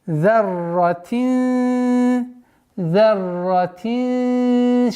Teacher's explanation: так как она подчиняется каф, как мы уже сказали, мискаля зарратин. Здесь у нас ихфа, сокрытие, в размере двух огласовок, удержание.